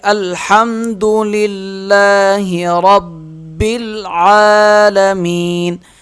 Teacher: عین کو بھی ایک الف کی مقدار کھینچیں گے، کیونکہ عین کے اوپر بھی کھڑا زبر ہے۔